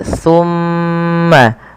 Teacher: Pada lafal tsumma ini ada huruf mim yang berharakat tasydid, teman-teman. Maka ketika kita membaca huruf-huruf yang berharakat tasydid terkhusus mim atau nun tasydid, itu wajib ditahan suara suara mimnya